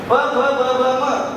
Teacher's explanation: दोनों होठों को आपस में मिलाए बिना इनका उच्चारण नहीं होता, ये ओष्ठ है, इसलिए उन्हें एकत्रित करके रखा हुआ है।